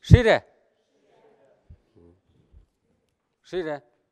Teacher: со звуком «ш», не смягчайте его, где не нужно. Не «ширя», а «ширя», «ш» твердый.